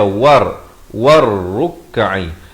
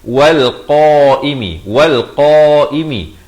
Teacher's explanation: lamnya tidak ada tanda mati asli jadi lam ini tidak dibunyikan